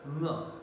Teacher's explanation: So back of the tongue makes a contact here, and of course the velum comes down to open the nasal passage, hence it is nasal sound. So velar nasal is nga, and it is voiced.